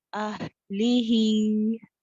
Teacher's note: ہا ساکنہ میں پورا ٹائم دے رخاوہ کا